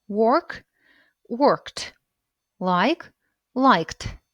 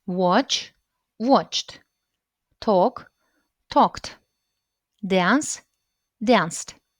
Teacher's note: Т – так вимовляється закінчення після глухих приголосних.